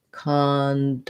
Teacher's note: in this word it does have the ah vowel o often says ah when it's stressed so it has secondary stress cond and then main stress is